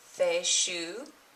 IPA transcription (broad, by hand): θeʃu